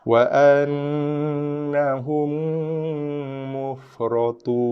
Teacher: So, hujung lidah menekan makhraj nun. Hujung lidah menekan gusi atas ataupun langit depan. Berserta dengan dengungan. Dua harakat ataupun lebih. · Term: wajibul gunah